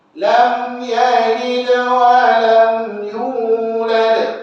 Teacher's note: Dan juga huruf mim bila mati lam, jangan lama sangat. Tutup mulut, rapat dua bibir, kemudian rongga atau angin sedikit keluar, masuk terus kepada ya. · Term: izhar syafawi